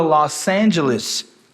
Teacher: Angeles, juntou, linking sound, consoante com vogal.